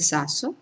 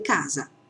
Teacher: Quindi abbiamo la S sorda del sasso, la S sonora de casa.